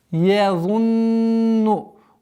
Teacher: чтобы звук я не переходил под воздействие за, как твердого звука эмфатичного, и не произносилось язунна, а езу.